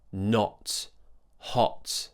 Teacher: So the lips are round and the tongue is pulling back. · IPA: /ɒ/